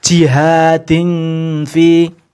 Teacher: nun matinya atau tanwinnya ini tetap dibunyikan ya, tetap berbunyi, namun sini sudah mulai masuk ke huruf fa-nya ya. Tuh, untuk namanya ikhfa ausat atau yang pertengahan.